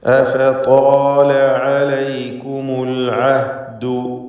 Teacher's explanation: താഇൻ്റെ ദീർഘാക്ഷരമായ അലിഫിൽ തഫ്ഖീം നൽകണം. താ ഇസ്തിഅലാഇൻ്റെ ഹർഫാണ്. സ്വരഭാരത്തോടെയാണ് ഉച്ചരിക്കേണ്ടത്. അതിനെ ദീർഘിപ്പിക്കുന്ന അലിഫിനും തഫ്ഖീമാണ്.